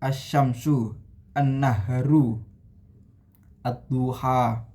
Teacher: Nah, pada contoh-contoh tersebut alif lam tidak dibaca jelas tetapi dilebur ke dalam huruf syamsiyah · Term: idgham syamsiyah